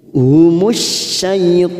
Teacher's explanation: Syaitan 4 harokat kita panjangkan karena kita wakaf di sini